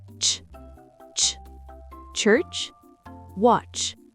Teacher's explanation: imaginez un petit thé avant le sh. C'est très sec. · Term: Les affricates